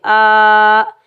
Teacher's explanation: حمزہ کے اوپر کھڑا زبر، 1 الف کی مقدار کھینچ کر ادا کریں گے